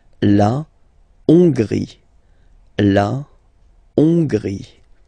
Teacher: So remember, H doesn't exist, so you don't pronounce it. So it starts with O-N, on, and then gris, final E, not pronounced.